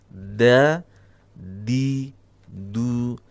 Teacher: ujung lidah kita menyentuh dinding bagian dalam dari gigi seri atas kita maka Insyaallah tidak akan terjadi da karena da itu terlalu tinggi